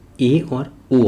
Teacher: है अर्ध संवृत स्वर इसके अंतर्गत ए और ओ आता है इनके उच्चारण में संवृत स्वर से थोड़ा अधिक मुंह खुलता है